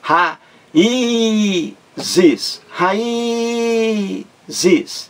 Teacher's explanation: Esse I aí forma um hiato, que é o encontro de duas vogais em sílabas diferentes. Ra-i-zes. Esse I aí está sozinho em uma sílaba, e é o mais forte.